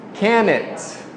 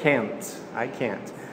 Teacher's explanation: O N vai direto para o T.